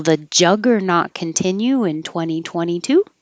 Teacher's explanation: this is a yes/no question, so it'll go up, up, up, up, up.